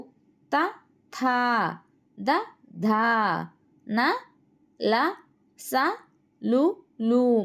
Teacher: దంతములు స్థానముగా గల అక్షరములకు దంత్యములు అని పేరు